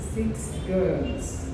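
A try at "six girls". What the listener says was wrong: If you forget my S.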